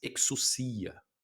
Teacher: Exucia é o ainda tem o som do K ali e depois um som de s. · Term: Xi